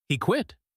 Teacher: replies with an echo, but her voice goes up.